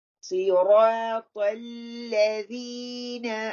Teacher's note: اهدنا الصراط المستقيم. را صاد heavy را heavy طا heavy لام light